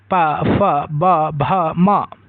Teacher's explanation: यानी कि इनका उच्चारण स्थान होठों से होता है। तो जिन व्यंजनों के उच्चारण में दोनों होठ आपस में मिलते हैं और वायु का मार्ग रोकते हैं। इन्हें ओष्ठ व्यंजन कहा जाता है। · इन ध्वनियों को बिना होठों को मिलाए नहीं बोला जा सकता।